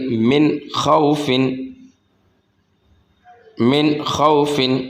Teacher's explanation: یہاں پر بھی نون ساکن ہے، نون ساکن کے بعد آ گیا خا اور خا حروف حلقیہ میں سے ہے تو یہاں پر اکفا نہیں ہوگا، یہاں پر اظہار ہوگا